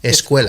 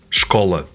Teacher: sometimes the diphthong ue in Spanish corresponds to the open O in Portuguese.